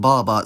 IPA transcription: bɑːbɑː